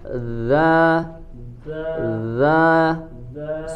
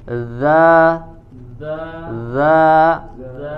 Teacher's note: suaranya yang mengalir ya, tidak ada angin ataupun udara yang keluar ya, karena dia bukan huruf hams, sebaliknya dia adalah huruf yang memiliki sifat al-jahr.